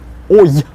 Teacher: It's that brief, fleeting y at the end that we're working on. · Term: I kratkaya